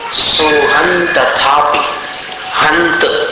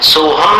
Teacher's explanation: अनुस्वार का उच्चारण अपने को न के समान करना है